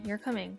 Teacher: if I say you're coming with a falling intonation I'm making a statement that doesn't necessarily require an answer